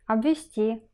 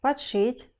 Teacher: перед глухими согласными звуки б д оказываются в слабой позиции и оглушаются